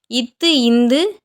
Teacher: மேல்வாய் பல்லின் அடியை நாக்கின் நுனி பொருந்துவதால் பிறக்கின்றன